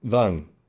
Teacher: The problem is the articulation, particularly of the V sound, the voicing, is not typically as strong in Vietnamese as it is in English.